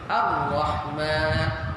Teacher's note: Ra ketika bersabdu tiada getaran.